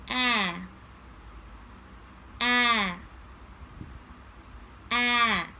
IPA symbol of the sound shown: æ